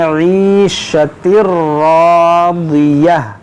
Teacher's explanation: را پر زبر ہے اور یہ الف مدہ ہے، اس کو موٹا کریں گے اور کھینچیں گے